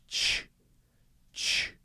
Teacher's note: So I release it, and it makes that sound, right? I don't use my voice, but it's sort of it's a start and a stop, but I'm stopping by not blowing any more air out.